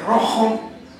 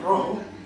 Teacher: Tiene dos fonemas menos que el castellano de Castilla, tiene la interdental fricativa sorda, raza, que nosotros los no castellanos pronunciamos raza, y la fricativa velar sorda, de rojo, ¿no?, que nosotros pronunciamos rojo, con ustedes, ¿no?, todos, ¿no?, toda Andalucía y toda América.